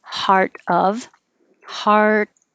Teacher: if you keep your voice on while you make a t it changes to a d because the t and the d are made in the same place